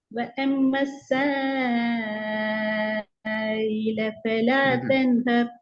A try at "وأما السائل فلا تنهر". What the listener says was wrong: இ இ ஈட sound வரல.